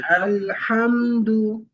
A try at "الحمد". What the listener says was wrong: শুরুটা শিথিলতার সাথে না। আ, আলহামদু।